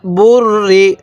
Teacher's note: তাহলে বা লাগবে এই রয়ের সাথে বুর, রজের রি, বুর রি। দেখুন রটা কিন্তু আমি দুইবার উচ্চারণ করলাম